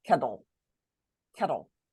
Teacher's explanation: when we're reading words with a TLE, sometimes it's going to sound more like d, like kettle, kettle.